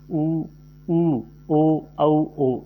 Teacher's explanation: जिन स्वरों के उच्चारण में होठों का आकार गोलाकार हो जाता है उन्हें वृत्ताकार स्वर कहते हैं।